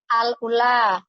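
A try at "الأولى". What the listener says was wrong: Iya, U-nya panjangin. Al-ula. Begitu Ibu. Ulang lagi.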